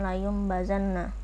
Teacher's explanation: Secara harfiah, iqlab berarti mengganti apabila nun sukun atau tanwin bertemu dengan huruf ba, maka bacaan nun sukun atau tanwin berubah menjadi bunyi mim